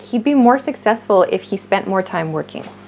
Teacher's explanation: So we reduce this would to a d sound.